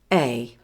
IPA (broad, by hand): eɪ